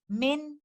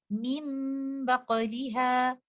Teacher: Min, but in case of continuation, when nun sakina is meeting with letter ba, in that case, I will change letter nun sakina into meme. The gunna that you hear is from letter meme. There will be no sound of letter nun sakina. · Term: iqlab